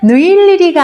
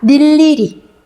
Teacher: 자음을 첫소리로 가지고 있는 음절의 의는 뭐로 발음한다? 이로 발음한다.